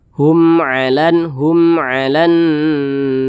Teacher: dibaca jelas tidak berdengung jadi jangan dipanjangkan jangan ditahan suaranya pendek saja Hum Alan hum alanar hum pendek saja Hum ala Hum ala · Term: izhar syafawi